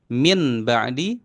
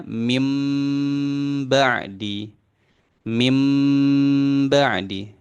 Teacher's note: nun sukun ketemu ba jadi mim Min ba'di jadinya mim ba'di mim ba'di ya durasinya dua Har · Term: iqlab